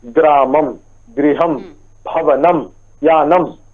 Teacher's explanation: उसने प्रमाणित करके बताया कि संस्कृत में जब आप अनुस्वार का उच्चारण करते हैं, जैसे ग्रामम, गृहम, भवनम, यानम, तो ये जो अंत में अनुस्वार का उच्चारण हो रहा है, अर्धमकार का उच्चारण हो रहा है